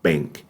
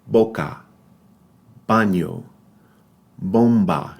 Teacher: it's that bilabial b